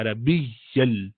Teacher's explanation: ین کو یل کیا اس لیے کہ آگے یرملون کا لام آ گیا